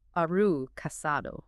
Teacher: Are you often becomes aru in rapid speech, so it sounds more like aru casado.